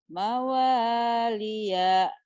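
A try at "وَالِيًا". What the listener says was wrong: mawalia. Pendek.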